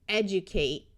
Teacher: Note that a D before a long U sound often sounds more like J.